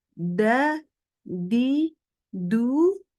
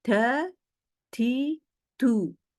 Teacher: Jadi yang seharusnya hanya ujung lidah, dia baca dengan bagian lidah depan, permukaan lidah depan, semua naik ke langit-langit. Sehingga terbaca bukannya da, di, du, menjadi da, di, du. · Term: logat daerah